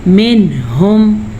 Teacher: تو ہم یہاں پہ ظاہر کر کے پڑھیں گے اور بغیر غنہ کے پڑھیں گے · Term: اظہار